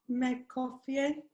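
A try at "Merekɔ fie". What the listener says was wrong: All you need to do is at the beginning, the word that you mentioned, you stretch it a bit. Me coffee. Me coffee. Me coffee. And this is how we write it, mere coffee. But when we are speaking, we say me coffee.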